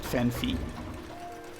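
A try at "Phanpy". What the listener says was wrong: No, it's Fanpy, but I've said Fanphy for years because I assumed that it was Phanphy, but there's no second PH. It's PY, so it's Fanpy.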